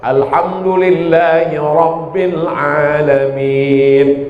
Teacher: Yang kedua, Ra-nya mesti tafkhim tebal.